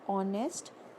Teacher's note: But if I say the word honest, the sound of H is not produced, instead a sound of O is produced, and O being a vowel, we will use and there and not a.